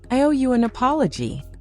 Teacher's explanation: Hear the difference between a mumbled, fast "sorry about that" and a calm, steady "I owe you an apology." Your voice should go down at the end, not up. A rising tone can sound like a question, like you're not sure.